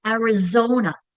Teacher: It's Zo that I'm stretching out, right? That's the accented syllable.